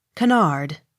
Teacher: canard accent on last syllable